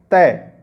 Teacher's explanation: जब आप तय बोलोगे तो देखना जो जीभ है वो दांतों से टकराती है।